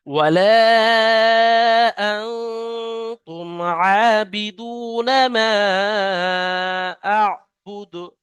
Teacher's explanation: আর শেষে দালকে যখন আমরা সাকিন করছি, হরফে কলকলা 5টি, কফ ত বা জিম দাল, তাই দালকে কলকলা করে পড়তে হবে, অর্থাৎ ধাক্কা মেরে আলাদা করে পড়তে হবে